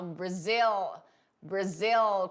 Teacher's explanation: Eu falo Brazil, Brazil, com esse dark L, com esse L negro que eu faço no final, que eu coloco a minha língua lá em cima. É uma forma de falar e você coloca mesmo, ele vai lá no céu da boca, Brazil, e volta, certo?